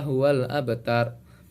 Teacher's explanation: huruf Qalqalah yang berada di tengah kalimat sehingga lafalnya dipantulkan dengan ringan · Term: Qolqolah Sugro